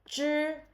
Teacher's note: 知 is the affricate and unaspirated sound. Your tongue curls back a little in your mouth